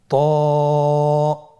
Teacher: ত এর মাখরাজ কোন জায়গা থেকে আপনারা স্ক্রিনে দেখতে পাচ্ছেন। জিহ্বার আগা, সামনের উপরের 2 দাঁতের গোড়ার সঙ্গে লাগিয়ে উচ্চারিত হয়।